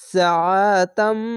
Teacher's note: শেষ অক্ষরটিকে একটি সাকিন দিয়ে 1 2 3 তিনটি অক্ষর 3 আলিফ টেনে পড়বেন মাদ্দে আরজি হবে